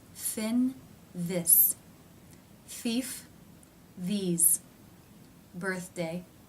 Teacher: The soft pallet is raised for this sound. You can see the tongue through the teeth. Just the tip comes through the th consonant sound.